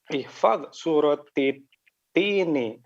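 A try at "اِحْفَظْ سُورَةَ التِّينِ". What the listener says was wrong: Ihfadz suratat tini. Surata dengan fathah di akhir. Kenapa dia? Karena dia adalah maf'ulun bih.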